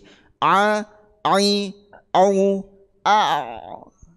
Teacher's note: Ain itu A itu harus dari tengah tenggorokan